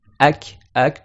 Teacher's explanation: tu sens que c'est un peu plus devant que aqo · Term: le kaf